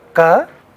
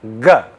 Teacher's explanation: Ga is a sound which has no air but vibration. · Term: voicing